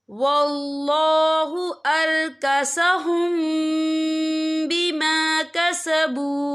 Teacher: और आगे देखिए अरकसहुम, यहाँ मीम साकिन है, मीम साकिन के बाद जो है बा आ रहा है, तो यहाँ पर इक्फा शक्फी होगा और हम यहाँ गुन्ना भी करेंगे। गुन्ना की मिकदार जो है 2 से 3 सेकंड होगी।